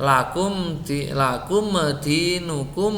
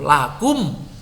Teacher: Jadi supaya tidak tawalud membacanya ditekan. Jadi suaranya jelas sekali di bibir itu.